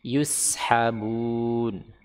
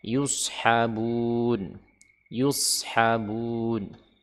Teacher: Sin dengan shad makhrajnya sama. Tapi sin dia istifal, sedangkan shad dia isti'la, sehingga terdengar tebal. · Huruf sin infitah, huruf shad itbaq, sehingga huruf shad itu tebal ya, tebal.